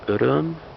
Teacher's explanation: The last vowel, is it rounded or unrounded? It's rounded.